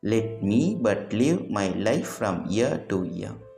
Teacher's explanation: a poetic line with 5 metrical feet consisting of one unstressed syllable followed by one stressed syllable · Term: iambic pentameter